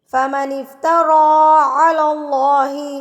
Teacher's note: اللہ سے پہلے جب زبر آ جائے تو اللہ کو پور یعنی کہ موٹا کر کے پڑھا جاتا ہے